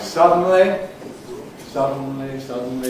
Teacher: one of those syllables is carried not by an ordinary vowel but by syllabic consonants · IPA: [ˈsʌdn̩li]